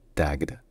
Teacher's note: il se termine par le gu qui est une consonne voisée et donc ça devient taged